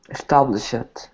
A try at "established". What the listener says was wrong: Okay, this word has sh at the end of it, so we say this word is established with a T sound. We don't pronounce the ED as ED for this. Get the T on the end. You hear t? You don't need to make the T quite as loud as that, but remember that it doesn't sound like ED.